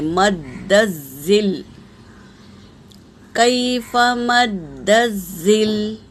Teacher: دال پر تشدید ہے، اسے سختی سے پڑھیں گے